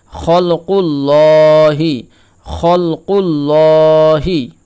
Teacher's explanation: এই যে লাম তাসদিদ অবস্থায় রয়েছে তার পূর্বে পেশ তাহলে লাম কি হবে পুর হবে